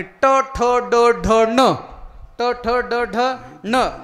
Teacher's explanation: ट, ठ, ड, ढ, न हे उच्चार करत असताना जीभ ही वर टाळूला लागली पाहिजे